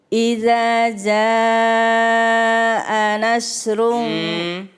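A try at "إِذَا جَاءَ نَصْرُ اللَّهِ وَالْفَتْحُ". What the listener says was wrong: Kalau nasru itu sya. Yang bukan sya, sa atau sod, nas. Coba bakso. Ya tuh sod.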